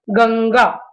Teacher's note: जैसे गंगा, अब ये क वर्ग का है ग, दूसरा वाला, तो इसमें ङ का आधा उच्चारण आएगा और ये अनुस्वार के रूप में लिखा जाएगा, गंगा। पंजा, यहाँ पर न्या जो है वो आधा उच्चारण ले रहा है, क्योंकि ज जो है वो च वर्ग का है, इसे हम पढ़ेंगे पंजा।